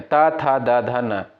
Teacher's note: दंत से उच्चारित होने वाले वर्ड आपके होते हैं जो त वर्ग के अंतर्गत आते हैं, त, थ, द, ध, न।